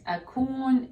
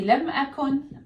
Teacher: you drop the long vowel in negation